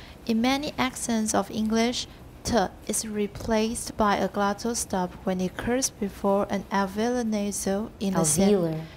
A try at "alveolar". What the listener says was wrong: Alveolar. No, not velar. Alveolar.